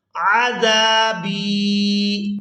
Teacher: با یا زیر بی کھینچ کر ادا کریں گے کیونکہ یہاں پر یا مدہ ہے